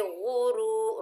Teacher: را کے اوپر پیش، آگے واو ساکن ہے، یہ واو مدہ ہے، را کو موٹا پڑھیں گے